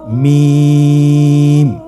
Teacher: হরফটির উচ্চারণ স্থান 2 ঠোঁটের শুকনো স্থান থেকে উচ্চারিত হয়।